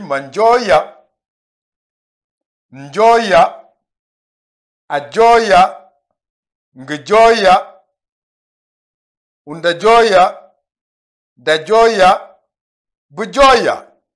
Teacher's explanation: Il y a la nasalisation pour le ndi, mais à cause de ce Y qui commence, qui est la racine du verbe qu'on conjugue, on n'entend pas la nasalisation